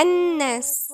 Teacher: ولاحظوا اننا مش بننطق اللام لانها لام شمسية مش قمرية